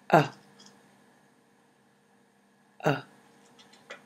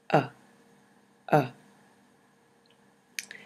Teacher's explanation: you simply let your mouth relax slightly open like this uh uh the tongue sits neutrally in the middle of the mouth the jaw is slightly relaxed open uh uh native speakers generally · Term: schwas